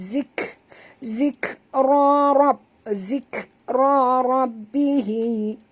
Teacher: Okey, huruf zal sentilkan lidah, lembut, dia tak tebal, zik, dan bunyikan hamas pada huruf kaf, zik rabbihi.